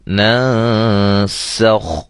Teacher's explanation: یہ دیکھیں اخفا باریک ہو رہا ہے، اس کو ہم موٹا نہیں کریں گے